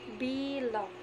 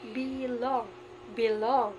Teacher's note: So the word be is the unstressed, while the long is the stress.